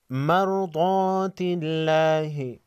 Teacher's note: اللہ، لفظ اللہ سے پہلے والے حرف تا پر زیر ہے، لفظ اللہ کے لام کو باریک پڑھیں گے۔